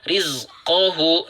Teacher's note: jika kita tidak membaca dengan jeda, maka kita akan membaca rizqohu dengan vokal 'u'